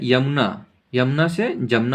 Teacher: अगर य आता है तो जैसे य ज बन जाता है